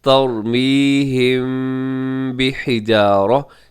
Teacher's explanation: تھوڑا سا میم کے اوپر آپ اپنی آواز کو ناک میں لے جاتے ہیں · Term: اخفاء شفوی